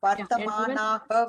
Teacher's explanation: Vartamanaah, we say. Vartamanaha with a dirgham and a visarga at the end.